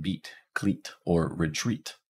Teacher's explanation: The high front unrounded tense vowel makes an E sound, like as in beat, cleat, or retreat.